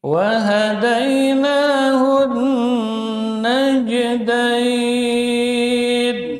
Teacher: Wahadainahun naj qalqalah sugra tengah lidah terangkat ke langit-langit atas sehingga makhrajnya tertutup rapat.